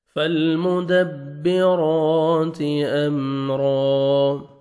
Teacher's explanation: فالمدبرات امرا، یہ دیکھیں میم ساکن کا اظہار ہے، جلدی پڑھیں گے، را کو جب سٹاپ کریں گے تو الف مدہ ہو جائے گا، را زبر الف، 1 سیکنڈ آپ نے کھینچنا ہے را کو اور را کو موٹا کر کے پڑھیں گے